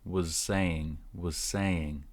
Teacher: was is short and Z at the end linking again so was saying sounds like was saying was saying well every